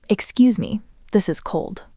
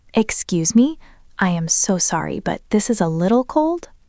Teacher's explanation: Your voice went up on excuse me and up on cold. It sounded friendly. >> That represents the wavy voice.